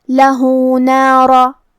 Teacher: کلمت نارا کے آخر میں را پہ زبر ہے تو ہمیں حرف الرا کو موٹی آواز میں پڑھنا ہے